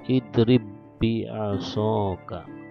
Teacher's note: Nah, contohnya di sini nih, tulisannya seperti ini membacanya. Jadi seolah-olah ba-nya tidak ada, langsung ke ba berikutnya dengan tasdid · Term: idgham mutamatsilain